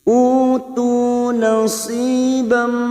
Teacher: siap masuk dan mendengung masuk ke huruf berikutnya, yaitu huruf mim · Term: idgham bigunah